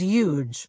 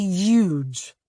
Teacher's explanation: donald trump doesn't pronounce the h in huge he treats it like a silent letter